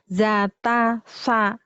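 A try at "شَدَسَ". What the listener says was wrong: Syadasa, ini cedal. Sya, za, sa. Ndaknya za. Syadza kan ada titiknya. Syadasa.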